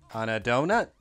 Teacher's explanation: It goes up at the end. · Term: intonation